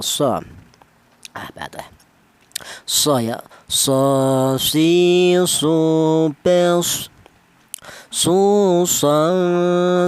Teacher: ujung lidah menyentuh pangkal gigi seri bawah ya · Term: huruf shad